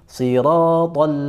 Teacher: huruf lam sifatnya tipis meskipun dia disukun dia harus tipis